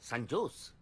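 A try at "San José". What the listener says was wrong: জের উচ্চারণটা এইচ এর মতো হবে, সান হোসে।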